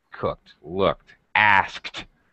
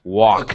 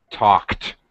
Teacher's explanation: K is a voiceless sound. So when we have ED, it makes a T sound.